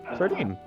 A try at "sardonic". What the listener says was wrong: sardonic, not sardinic.